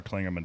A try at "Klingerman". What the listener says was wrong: Klingerman. There's no N.